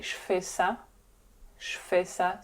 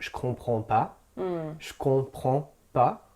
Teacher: You drop that e sound and it's je in the beginning of a sentence. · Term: la chute du e